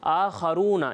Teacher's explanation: یہاں خا کو جو ہے وہ پر پڑھنا ہے، باریک نہیں پڑھنا